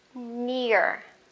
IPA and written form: nɪə (near)